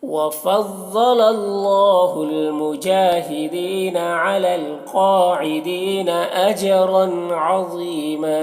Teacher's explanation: اجرن جیم میں قلقلہ کرنا ہے اور را کو پر پڑھنا ہے